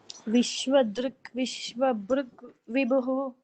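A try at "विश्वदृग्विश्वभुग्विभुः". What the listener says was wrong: So no, don't use a bru there. Vishwa Drug Vishwa Bhuk Vibhuhu.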